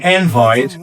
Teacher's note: An invite, which is a noun, where the stress is on the first syllable